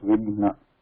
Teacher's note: So here between Gha and Na, the transitional nasal sound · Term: fourth yama